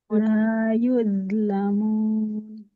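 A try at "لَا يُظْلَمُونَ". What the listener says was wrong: Oke, coba huruf zo-nya. Wo, zo. Jangan do. Nah, zo ya. La yuzlamun. Oke, jadi huruf do ini harus mengalirkan suara, tapi dia nggak boleh dengan nafasnya ya. Nah, tertahan aliran nafas hanya suara saja yang mengalir.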